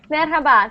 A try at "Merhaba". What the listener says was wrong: Not very express R sound.